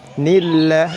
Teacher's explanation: Nillah lafzul jalalah didahului kasrah, dibaca tarqiq, tarqiq tipis